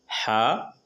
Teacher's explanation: हा मुंह से बिना आवाज हल्की सांस की तरह हलक से आवाज निकालते हुए हा अदा होते हैं।